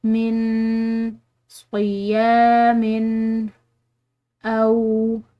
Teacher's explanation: یہاں پر نون ساکن ہے، اس کے بعد قاد، یہ حروف اخفاء میں سے ہے، تو یہاں پر ہم نے نون پر، اس نون ساکن پر ہم نے اخفاء کرنا ہے